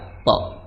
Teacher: makhraj to adalah di ujung lidah bertemu dengan pangkal gigi seri atas, maka kita tinggal sentuhkan di situ. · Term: qalqalah